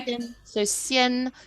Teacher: So the A and N is more like an E and an N.